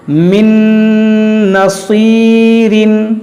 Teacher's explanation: صاد حروف مستعلیہ ہے اور یا حروف مدہ ہے, اس کو موٹا کریں گے, اس کو کھینچیں گے